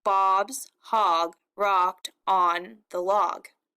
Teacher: In most of those words, except for the, we're hearing an ah, that O sound. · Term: assonance